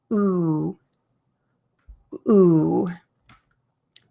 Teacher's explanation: The tip of my tongue is in the bottom of my mouth, and the back is pulled up kind of high and almost touches the back of my mouth, at the top of my mouth.